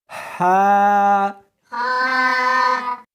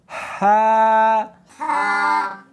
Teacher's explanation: اس کو حلق میں سے نکالنا ہے اور ساتھ میں ہوا بھی ہونی چاہیے، ہا، ہاں نہیں پڑھنی بلکہ اس کو حلق میں سے نکالنا ہے، سینے میں سے نہیں نکالنا، ہا، شاباش۔